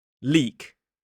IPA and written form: liːk (leak)